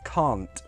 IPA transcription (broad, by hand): kɑːnt